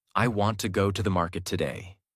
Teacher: Want, go, market are strong. Other words become lighter and faster. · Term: American rhythm